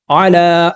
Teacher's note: नज़लना, अलिफ से पहले ज़बर है, अलिफ रूफ मद्दा है, ज़बर को 2 हरकत के बराबर लंबा करना है। आला, लाम के ऊपर खड़ा ज़बर है, 2 हरकत के बराबर लंबा करेंगे। या साइलेंट है, नहीं पढ़ा जाएगा।